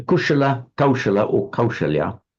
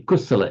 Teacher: Pali doesn't have a sh, it becomes a s.